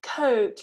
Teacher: we really need to be moving our lips from a relaxed position into a really rounded position